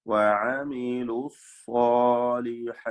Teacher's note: സാ എന്ന സ്വാദിനും അലിഫിനും തഫ്ഖീം കൊടുക്കണം. الصالحات വഖഫ് ചെയ്യുക. · വാവിനെ ഇൽത്തിഖാ സാക്കിനയിന് വേണ്ടി ഒഴിവാക്കി കളഞ്ഞുകൊണ്ട് ഓതുക